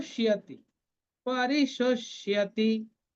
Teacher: half মূর্ধন্য স আর পূর্ণ ইয়া, তাহলে পরিশুষ ইয়াতি, আমরা মিলিয়ে পড়বো শিয়াতি